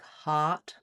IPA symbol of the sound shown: ɑ